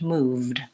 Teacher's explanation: has no vowel sound between my V and my D